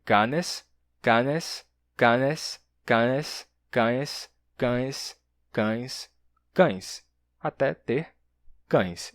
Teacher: E o N desaparece, deixando só uma nasalidade, né?